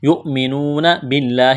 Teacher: لفظ اللہ کے نام سے پہلے زیر ہے، لفظ اللہ کے نام کو باریک کرنا ہے · واو مدہ ہے، ایک الف کے برابر کھینچنا ہے